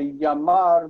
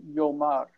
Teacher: many of the kamatz sound in historical Hebrew, in the Canaanite branches, became O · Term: Canaanite shift